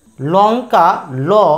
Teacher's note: ল এর উচ্চারণ হচ্ছে আমাদের উপরের পাতি দাঁতের গোড়ায়